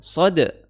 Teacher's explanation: Di situ tebal sod ya, makhrajnya di ujung lidah bertemu dengan gigi seri bawah ya